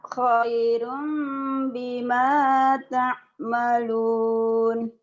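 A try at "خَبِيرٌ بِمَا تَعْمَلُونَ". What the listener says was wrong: salah bukan khairum tapi khobirum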